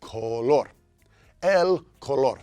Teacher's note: Emphasis on that second syllable